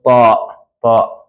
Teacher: The tip of your tongue touches the roots of your upper teeth from inside.